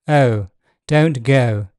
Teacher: in RP o starts centrally or slightly front o don't go and this same position is used before L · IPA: [əʊ]